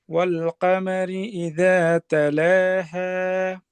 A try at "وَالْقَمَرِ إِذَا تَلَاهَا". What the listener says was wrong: আচ্ছা কফের উচ্চারণটা কি অনেকটা কামারি না কমারি? ক কিছুটা আকারের মিশ্রণ, এটা থাকবে না। ক